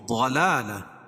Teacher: وہ ضاد کو پر پڑھیں گے، کیوں؟ ضاد حروف مستعلیہ میں سے ہے، اور لام کے اوپر کھڑا زبر ہے، کھڑا زبر قائم مقام الف مدہ کے، اس کو ایک الف کے برابر کھینچ کے پڑھیں گے۔